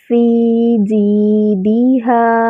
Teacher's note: یا ساکن اس سے پہلے کسرہ یا مد بن رہی ہے، اس کو 2 حرکات برابر لمبا کریں گے۔